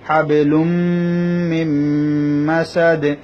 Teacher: হাবেলুম বা কলকলা হরফ, হাবেলুম মিন মাসাদ। এখানে ইদগামে মা গুন্না হয়েছে, মিন মাসাদ এখানেও ইদগামে মা গুন্না হয়েছে।